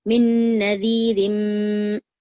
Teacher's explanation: फिर उसके बाद देखिए मीम पर फिर तजदीद आ गई, मिन नदीरिम, इस तरीके से आपको जो है मीम पर फिर से गुन्ना करने का है